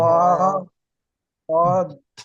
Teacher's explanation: জিভের কিনারা এবং তার বারবার উপরের মাড়ির দাঁতের গোড়ার সাথে লাগিয়ে উচ্চারিত হয় দোয়াদ।